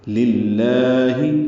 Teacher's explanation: للہ لام کو 2 حرکات لمبا کرنا ہے، ہا معروف طریقے سے ادا کرنا ہے، اقصی حلق سے نکالیں گے.